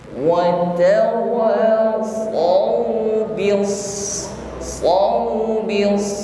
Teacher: Shadnya tasydid ditekan membacanya, lalu ditebalkan karena sifatnya isti'la